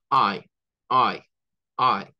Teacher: Y esta es como una a con una y corta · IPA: /aɪ/